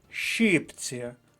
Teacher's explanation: наголос на перший склад щіпці п'ять літер шість звуків не забувайте літера ща завжди позначає